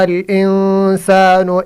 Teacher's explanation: انسان ادھر اخفا ہوگا، اس کی وجہ سے نون ساکن ہے، نون ساکن کے بعد سن آیا۔ اگر تنوین یا نون ساکن کے بعد یہ حرف آ جائے، تا، ثا، جیم، دال، ذال، زا، سین، شین، صاد، ضاد، طا، ظا، فا، قاف، کاف، تو غنہ کے ساتھ اخفا ہوگا، غنہ کی مطلب ناک میں آواز چھپانا۔